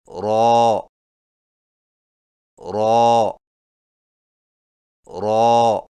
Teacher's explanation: را کی ادائیگی میں زبان کی نوک کی پشت کو اوپر والے دانتوں کے مسوڑوں سے لگا کر موٹی آواز میں پڑھیں، یعنی را را را۔